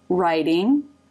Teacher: Lips form a tight R position and then open into the I as in by diphthong. And the tongue moves up into the T position.